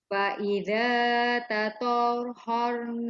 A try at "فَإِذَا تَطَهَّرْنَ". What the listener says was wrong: Dia kena tekan pada ha tu sebab sabdu kan dia tak boleh lambat. Tatahhar terus.